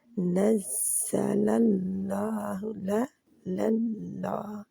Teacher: लाम पहला जो नज़्ज़ला का लाम है जी बारीक ही रहेगा